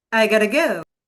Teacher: Have got to becomes gota flap t plus reduction sounds like gota accent comparison neutral accent versus American version.